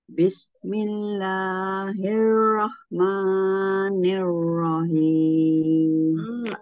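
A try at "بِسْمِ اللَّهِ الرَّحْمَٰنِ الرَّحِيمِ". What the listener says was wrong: Tapi lahnya jangan terlalu panjang. Jangan bismillah. Coba kalau kita ayunan, tiga ayunan ya. Bismillahirrahman. Itu beberapa ayunan. Jadi langsung bismillahi. Langsung bismillahi.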